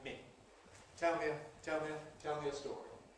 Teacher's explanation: first of all, ‘me’ has its weak form /mi/